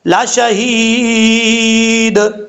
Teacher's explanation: Okay, ذالک لشہید، یہ ہا جو ہے بھاری ساؤنڈ کے ساتھ پڑھا جائے گا، اور یا مدہ ایک الف کی مقدار لمبا کریں گے، جب وقف کریں گے تو دال ساکن ہو جائے گا، قلقلہ بھی ہوگا، لشہید۔